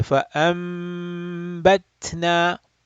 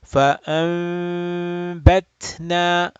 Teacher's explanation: Generally, the Qaris of Indo-Pak subcontinent, they would close their lips. Okay, more or less tightly. So they would say فَأَنبَتْنَا. But many of the Arab Qurra, they will open their or separate their lips paper width, and they will say فَأَنبَتْنَا.